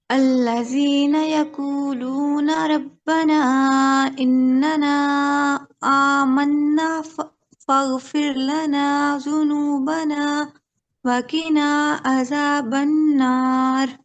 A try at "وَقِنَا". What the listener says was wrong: ठीक है, बारकल्ला, आपने सही पढ़ा, लेकिन वकीना में काफ को मोटा रखिए, वकीना।